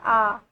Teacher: जैसे आ बोलते हैं तो पूरा खुल जाता है मुंह। ठीक है, तो वो विवर्त स्वर में आ जाता है आ।